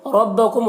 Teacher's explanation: را کو پر پڑھیں گے۔